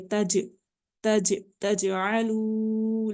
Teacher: جیم کے اوپر قلقلہ کی آواز آ رہی ہے، چونکہ یہ ساکن ہے